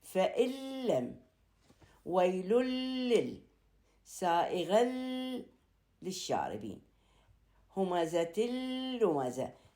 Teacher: نلاحظ باللوحة فإن لم تفعلوا، فإن لم، إذن انتغمت النون بحيث ما ظهرت النون نهائي وصار عندها إدغام، لأن إجا وراها حرف اللام الإدغام كامل ولا يوجد فيه غنة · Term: الإدغام بلا غنة